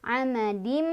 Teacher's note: Fi Amadim di sini ada idgham bigunnah karena ada tanwin kasroh bertemu dengan mim, dibacanya tanwinnya masuk ke mim sambil berdengung. Amadim gitu.